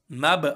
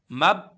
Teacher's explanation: با کا جو مخرج ہے یہ دونوں ہونٹوں کی تری ہے، جب یہ دونوں ہونٹ آپس میں ملتے ہیں تو یہ با ادا ہو جاتا ہے۔ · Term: قلقلہ